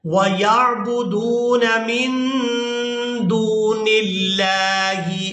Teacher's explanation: لفظ اللہ کے لام کو باریک ادا کیا جائے گا کیونکہ اس سے پہلے والے حرف کے نیچے زیر ہے